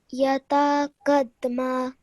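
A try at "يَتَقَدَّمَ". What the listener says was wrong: Okay, just try and focus on this bit over here. Join the qaf to the dal. Qadda. Okay, so instead of saying qada, you're saying qadda. Just make sure that you're joining the mushaddad letter onto the previous letter with force and straight away.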